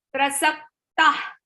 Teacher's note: Kha is the visarga. Exhalation sound should come like kha.